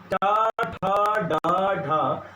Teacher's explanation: जहाँ जीभ का अग्रभाग स्पर्श कर रहा है उसे मूर्धा कहते हैं